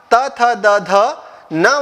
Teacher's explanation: जीभ जो है वो ऊपर के दांतों को स्पर्श करती है और फिर ध्वनियां बाहर निकलती है